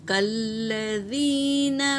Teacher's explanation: کاف پہ حرکت ہے، لام پر تشدید ہے، اسے 2 بار پڑھیں گے · یا ساکن سے پہلے زیر یا مدہ، نون ساکن کے بعد اخفا کے 15 حرفوں میں سے قاف آیا ہے تو یہاں نون ساکن کا اخفا ہوگا، اور با پر سکون ہے تو یہ خلخلہ کرتے ہوئے ادا کریں گے۔ اور میم ساکن کے بعد ما اور میم کے علاوہ کاف آیا ہے تو یہاں پر میم کا اظہار ہوگا